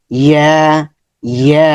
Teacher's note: ইয়ার মাখরাজ হচ্ছে জিহ্বার মধ্যখান উপরে তালু দিকে চলে যাবে, জিহ্বার মধ্যখান, জিমের মতো। · জিহ্বার আগা নিচের দিকে আসছে, মাঝখান কি হবে, গোলাকার হয়ে উপর দিকে চলে যাবে বাঁকা হয়ে। ইয়া, ইয়া, ঠোঁটগুলো দুই দিকে চলে যাবে, ইয়া।